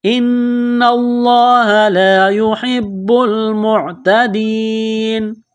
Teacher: یہاں دیکھیں لفظ اللہ کے نام سے پہلے زبر ہے، تو اس کی وجہ سے لفظ اللہ کے نام کو موٹا کرنا ہے، اور نون مشدد کی وجہ سے یہاں غنہ کریں گے، آواز ناک میں چھپائیں